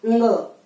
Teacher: कंठ नासिका च इसका उच्चारण स्थान है